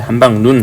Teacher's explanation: 한방 눈이 원래는 길죠. 근데 한방 눈 하면 눈 짧아집니다 · 그 다음에 한방 눈, 국어의 긴 소리는 일반적으로 단어의 첫 음절에서만 나타난다. 본래 길게 발음되던 것도 둘째 음절 이하에 오면은 짧은 소리로 발음되는 것을 볼 수가 있는데요. 한방 눈이 원래는 길죠.